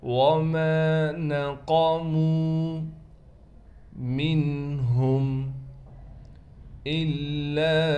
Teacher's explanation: حمزہ کو لام سے ملائیں گے، لام پر تشدید ہونے کی وجہ سے لام پر ٹھہراؤ کیا جائے گا.